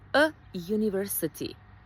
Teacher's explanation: Iako se piše sa u, university, a u je samoglasnik, izgovaramo ga sa j